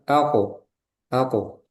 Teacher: Jadi qalqalah itu enggak boleh ada tambahan hamzah